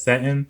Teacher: the G dropping, so to speak. Instead of setting, she says, settin'.